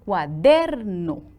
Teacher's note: La sílaba tónica es der y el acento que tiene esta palabra es acento prosódico.